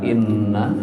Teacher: di kata inna itu nunnya digunakan dengung